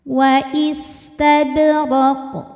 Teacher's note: Huruf ra dibunyikan secara tafkhim karena harokatnya di atas fathah. Cara bacanya ro tebal.